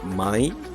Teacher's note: This mai is not or no with a falling tone.